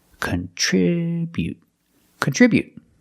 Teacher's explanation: Remember to put the stress on the second syllable.